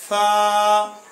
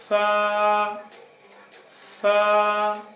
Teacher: नीचे वाला होठ जो है इस नीचे वाले होठ को ऊपर वाले दांतों से मिलाने से ये हर्फ अदा होगा